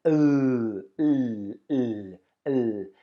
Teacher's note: when you make the sound of the L and you touch your throat, you should see that your vocal cords are vibrating.